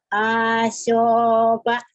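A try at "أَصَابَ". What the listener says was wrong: Salah, yang panjangnya tengahnya doang. Salah.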